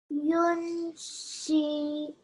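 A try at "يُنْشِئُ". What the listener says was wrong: Read it one more time. Just make this sheen less long because it's just a kasra.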